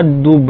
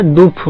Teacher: अब इसको वो लोग दूफ बोलते हैं, लेकिन लिखा दुब है हमारे हिसाब से, हिंदी वालों के हिसाब से, ठीक है। तो जो कंपन करने वाला है ब अंत में, वो क्या हो गया? फ में बदल गया, चुप हो गया, मतलब चुप वालों में बदल गया, ठीक है।